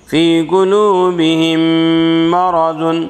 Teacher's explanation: میم مشدد میں غنہ ہوگا، غنہ کے ساتھ ملا کر پڑھیں گے